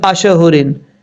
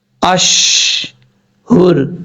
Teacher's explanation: آپ نے شین کو ساکن کرنا ہے کیونکہ ساکن ہے پہلے سے، تو اس میں آواز کو لوٹانا نہیں · شین کے اوپر قلقلہ نہیں کرنا. بعض اوقات لوگ پڑھتے ہیں اشہورن، ایسا نہیں کرنا، غلط ہو جائے گا.